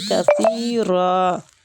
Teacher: سا جو ہے یہ نرمی والا حروف ہے، زبان کی ٹپ تھوڑی سی باہر آئے گی